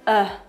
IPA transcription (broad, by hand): ʌ